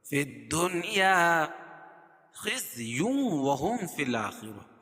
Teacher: خزی تنوین کے بعد ادغام مع الغنہ کے 4 حرفوں میں سے واو آ جائے گی تو یہاں غنہ کر کے پڑھیں گے. وَلَهُمْ یا اظہار شفوی، فی الآخرہ را پور پڑھی جائے گی اور خا کو بھی پور پڑھیں گے.